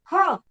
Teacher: જેનું ઉચ્ચારણ કરતા વધારે પ્રાણવાયુની જરૂર પડે એને મહાપ્રાણ કહેવાય